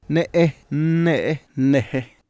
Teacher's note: The following are minimal pairs in Chicahuaxtla Triqui comparing 3 contrastive word final rhymes for the Triqui words baby, rope, and dream. The first word has an intervocalic glottal stop, and the last 2 words have glottally interrupted vowels.